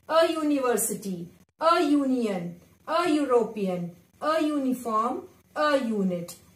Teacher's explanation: though they are beginning with vowel letters, but they sounds like consonant y